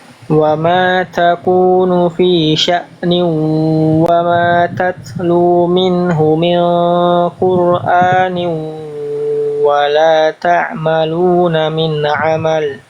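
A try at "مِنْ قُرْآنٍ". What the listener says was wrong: Nah, di sini tebalkan lagi sedikit lagi, sama nih ikhfanya. Kalau kita mendapati ikhfa ketemu huruf tebal, pastikan diangkat lebih kuat pangkal lidahnya ketika ikhfa biar kerasa. Oh, ikhfanya, ikhfa hakikinya ketemu huruf tebal. Ya, min Qur'an ya. Wa ma takunu fi sya'nin wa ma tatlu minhu min Qur'anin dan seterusnya. Jadi tadi di sini kurang tebal.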